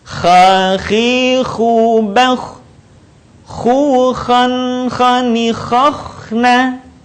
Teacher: huruf ini dikeluarkan dari tenggorokan yang terdekat dengan rongga mulut kita